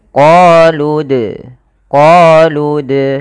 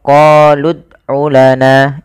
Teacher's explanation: Jadi bagaimana cara membaca qalqala itu dia memantulkan tanpa ada huruf hamzahnya · Dalam pelafalannya kita harus memantulkan dalnya. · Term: Qalqalah, qalqalah